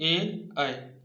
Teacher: कंठ और तालु दोनों से प्राणवायु टकराती है, जिससे इन सभी वर्णों के उच्चारण होते हैं। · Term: कंठ तालव्य